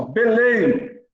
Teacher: o M tem som de Y